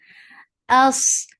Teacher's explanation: hamza is sharp and short.